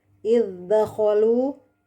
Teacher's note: Di ayat 25, idzakhalu hamzah, ada pertemuan dua huruf hamzah dengan dal. Hamzah ada di aqsal halq dan dal ada di taraful lisan. Karena sudah lintas makhraj, maka ini dinamakan mutabaidain mutlak karena yang pertama berharokat, yang kedua sukun.